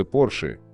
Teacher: Произносится Porsche с ударением на первый слог